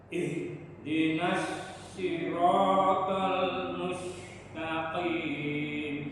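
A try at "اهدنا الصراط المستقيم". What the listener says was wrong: Iya, shotnya kebanyakan di shot ya, kebanyakan memang tadi sin semuanya. Sin lagi dulu, ya nggak boleh. Si ya, si tebel moncong ya. Siratal bukan siratal, salah. Si ya.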